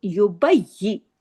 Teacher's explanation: युबय्यिनुल्लाहु, युबय्यि, इसको सख्ती से जोड़ना है, क्योंकि देखिए तशदीद है या के ऊपर, युबय्यि, या को 2 मरतबा पढ़ने में आना चाहिए, इसको ढीला ढाला नहीं पढ़ना। युबय्यिनुल्लाहु नहीं, युबय्यिनुल्लाहु, अल्लाह के नाम से पहले पेश है, तो लाम को हैवी भी करना है।